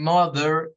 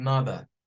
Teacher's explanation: r o sea al final aparece una e y una r ellos no suenan a la r no suenan a or or no suenan er tampoco ellos vienen y lo que suenan es un sonido vocal que en inglés se le conoce como el shua